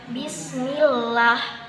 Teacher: apabila ada kasrah sebelum jalalah maka dibaca tarqiq tipis